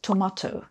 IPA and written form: təˈmɑːtəʊ (tomato)